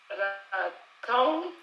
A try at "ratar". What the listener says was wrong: Ratatata, ratar. Parce que c'est un ratata, la tatata, ratar. En fait, il n'y a pas de nga dedans. Donc, c'est simplement un ta, plus le son ra. Donc, la tatata, ratar.